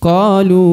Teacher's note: perhatikan huruf qa dibaca 2 harokat lagi ya, karena ada tanda panjang 2 harokat yaitu huruf alif. Kemudian huruf lu dibaca panjang 4-5 harokat di sini. · huruf lu dibaca panjang 4-5 harokat di sini. Perhatikan karena ada tanda panjang 4-5 harokat juga ya.